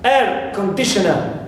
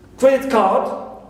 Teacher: we always place our primary stress on the first part or element of this compound nouns